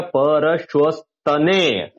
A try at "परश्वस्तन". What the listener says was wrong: हाँ परश्वस्तने नहीं परश्वस्तन।